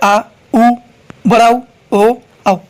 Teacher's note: जीभ के पीछे वाले हिस्से से जो उच्चारित करते हैं वो होता है आ, उ, बड़ा उ, ओ, औ। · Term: पश्च